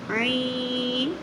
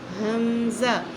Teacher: عین درمیانی حلق سے، حمزہ انتہائی حلق سے